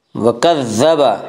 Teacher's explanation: वअम्मा मन बखिला वस्तगना वकज़्ज़ब बिल हुस्ना, वकज़्ज़ब, ज़ाल को नरमी के साथ पढ़ेंगे। ज़ाल का मखरज ज़ुबान की नोक और सनाया उलिया का किनारा